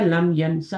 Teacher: वो जो long vowel होता है, अलिफ मकसूरा होता है, वो शॉर्ट हो जाता है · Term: शॉर्ट वॉवेल